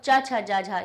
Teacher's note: तालु से हमारी ध्वनि टकराई